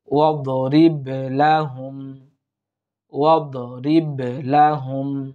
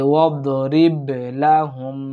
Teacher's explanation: রিব কলকলা করার চেষ্টা করব, মাখরাজে অর্থাৎ উচ্চারণে একটু ধাক্কা দেওয়ার চেষ্টা করব